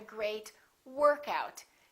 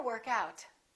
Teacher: Sometimes a phrasal verb has a noun equivalent. For example, work out can be a noun, and I can say, workout. I had a great workout. In that case, we emphasize the first part.